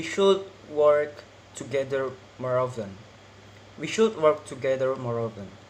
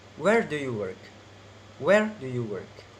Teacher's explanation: let's go to the first is falling intonation falling intonation is the pitch of the voice falls at the end